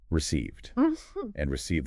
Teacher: Here the a makes the long e sound and the ed sounds like d.